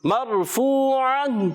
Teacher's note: را ساکن سے پہلے زبر آنے کی وجہ سے یہ را بھی پر ہو جائے گی، موٹی ادا کریں گے. مرفوعہ، حرف مدہ کو ایک الف کھینچ کر ادا کریں گے، عین کی ادائیگی کلیئر کریں گے، گول تا کو وف میں ہا سے بدل دیں گے.